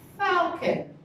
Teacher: The stress is on the falcon. Okay, so the stress would be on the first part.